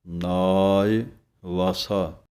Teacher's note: ਨੰਨੇ ਦੇ ਕੰਨੇ ਦੀ ਆਵਾਜ਼ ਲੰਮੀ ਦੇਣੀ ਹੈ, ਈੜੀ ਸਿਹਾਰੀ ਦੀ ਆਵਾਜ਼ ਥੋੜ੍ਹੀ ਹੈ।